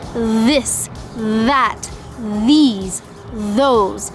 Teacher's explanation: You're making the TH sound with a vibration in your throat.